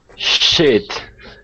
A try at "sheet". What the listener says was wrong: Now, what you want to be careful with is if you use the short I sound in pronouncing that E, it's going to sound like a cuss word. It's going to sound like you're saying mierda. Okay, so you want, instead of using the short I and saying shit, okay, you want to say E, she, sheet. She, sheet.